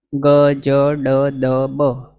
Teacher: દ બ આની અંદર પણ કોઈ વધારે પ્રયત્ન કરવાની જરૂર નથી પ્રાણ પૂરવાની કે હવા કાઢવાની એવી કોઈ જરૂર નથી